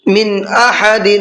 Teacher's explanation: من احد، نون ساکن کے بعد میں حمزہ آ رہا ہے اور حمزہ اظہار کے حرفوں میں سے ہے، تو یہاں پر نون کی آواز کو ظاہر کر کے پڑھنا ہے، غنہ اخفا کچھ بھی نہیں کرنا ہے، یہاں پر صاف صاف پڑھنا ہے۔